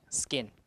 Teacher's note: the condition is you have an s in front so unaspirated